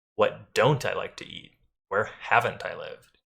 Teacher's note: Notice that we're stressing the negation.